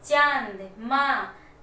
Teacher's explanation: तो इसमें क्या हो रहा है कि नाक और मुंह दोनों पे जोर आ रहा है। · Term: चंद्र बिंदु